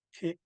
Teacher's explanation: You could literally hear the slight pause. We pronounce ki first and then go into e. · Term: glottal stop